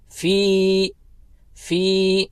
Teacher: فا کو کھینچنا ہے کیونکہ فا کے بعد یا حرف مدہ میں سے ہے، تو دو حرکت کی مقدار اس کو کھینچیں گے